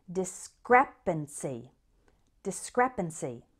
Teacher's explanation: here's our next word of the day in may it's discrepancy this word has four syllables with the stress on the second one